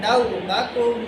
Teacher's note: یہاں پہ کوئی حروف خلقی نہیں ہے اس لیے آپ ایک الف کے برابر غنہ کریں